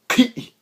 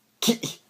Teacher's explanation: Maybe I should pronounce this as a velar stop instead of a uvular one.